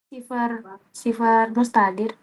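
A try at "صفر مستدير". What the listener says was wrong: Cuma beda huruf saja. Sifir mustadir. Bukan sifar ya. Sifir mustadir ya.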